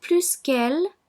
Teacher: Also, in the comparative expressing superiority, when que is placed immediately after plus, the S in plus is pronounced.